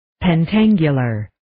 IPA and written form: pen'tæŋgjələr (Pentangular)